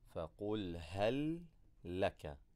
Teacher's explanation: we're not going to remove our tongue from the position of the lam and then go back again to the lam. We're not going to say فَقُلْ هَلْ لَكَ هَلْ لَكَ. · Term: idgham